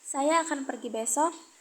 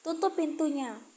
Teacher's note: Ditandai dengan penurunan nada di akhir kalimat. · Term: intonasi turun